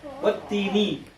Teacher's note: The lam is dropped because this is huruf shamsi.